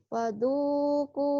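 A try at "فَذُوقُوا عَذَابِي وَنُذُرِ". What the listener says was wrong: Falzuku. Kedengarannya fuduku ya. Falzuku.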